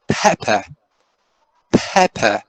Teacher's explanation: we can say that per is fully aspirated right fully aspirated we have an instance of fully aspirated okay